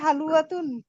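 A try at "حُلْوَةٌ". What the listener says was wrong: হুলওয়াতুন, এটা কি? হালুয়া না, হুলওয়াতুন। হুলওয়াতুন আয়ের মধ্যে পেশ লামের জজম।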